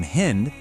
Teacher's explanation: ancient Persians pronounced the S [music] sound as an H.